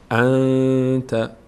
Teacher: حروف یرمنون هست نه ب هست پس اینجا اخفا میشه نون از مخرج خودش ادا نمیشه از بینی ادا میشه